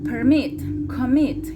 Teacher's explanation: Cuando tengo un verbo de 2 sílabas y tengo la mayor fuerza de voz en la segunda sílaba